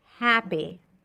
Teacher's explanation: You want to find that nice balance between e and a